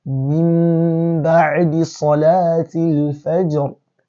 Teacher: You're only changing the Nuun Sakinah here to Mim and now infusing the Mim into the Ba. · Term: Al-Iqlab